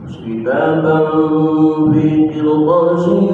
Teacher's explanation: ada tanwin ketemu huruf fa ikhfa, namun ikhfanya ikhfa ausat, suaranya suara M